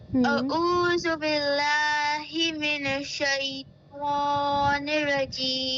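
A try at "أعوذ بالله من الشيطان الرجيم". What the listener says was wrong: آپ اس کو اتنے آہستہ سے کہہ کر چلی جاتی ہیں، من الشیطان، یہاں پر شدہ ہے یعنی تشدید لگی ہوئی ہے شین کے اوپر، تو آپ نے بولنا ہے، شین کی ساؤنڈ آپ کو 2 بار آنی چاہیے۔ جب آپ اس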